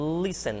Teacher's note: O T quase não é pronunciado